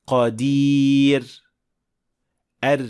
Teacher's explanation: Ingichga o'qiladigan roda esa tilning orqa qismi ko'tarilmaydi. Natijada yumshoq ohang paydo bo'ladi.